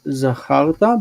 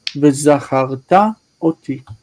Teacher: with the irreal perfect, the accent is pulled to the end, so it's not zacharta, but v'zacharta oti.